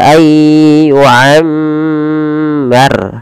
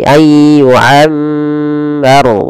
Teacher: Kemudian pada lafal ra di sini wajib ditebalkan, jangan dibaca ayyu'ammar tapi ayyu'ammar, tebal ra-nya karena dia ra tafkhim